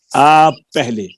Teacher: پے دوسری پے میں مل گئی ہے